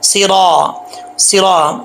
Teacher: را کے اوپر زبر ہو تو موٹا پڑا جاتا ہے، پیش ہو تب بھی موٹا پڑا جاتا ہے، زیر ہو تو بریک پڑا جاتا ہے۔